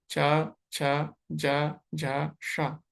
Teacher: च छ ज झ को बोलते समय आपकी जीवा जहां पे है वहीं से आपको श को बोलना है।